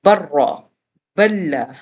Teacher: اس کا دوسرا پارٹ جو ادغام بغیر غننے کے ہے، جب نون ساکن اور تنوین کے بعد لام اور را آ جاتا تھا تو ہم نے وہاں پر ادغام کیا، لیکن بغیر غننے کے کیا، جیسے با 2 زبر، را آگے برا، بلا، ہم اسے بن را نہیں پڑھ سکتے، ہم اسے بن لا نہیں پڑھ سکتے، ہم نے نون کو اسکپ کرنا ہے